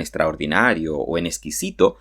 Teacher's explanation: Que habitualmente, por ejemplo, en extraordinario o en exquisito, nosotros no pronunciamos ese sonido K y solamente pronunciamos el sonido S. Esto es lo habitual en el habla cotidiana.